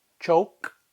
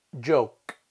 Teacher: The third pair are the unvoiced ch and the voiced j